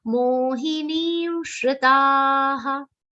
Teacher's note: Then shri will be a short sound here. The shri is a short sound between two long sounds.